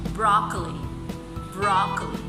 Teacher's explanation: So the first syllable is stressed, broccoli.